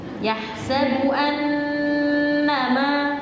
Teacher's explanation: di situ nunnya ada tasdid, dengungannya panjang. Kurang panjang tadi.